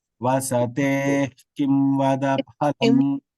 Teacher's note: Because ka is there to the right, jihva mulya it is called. Jihva mulya and upadmaniya, we pronounce half visarga.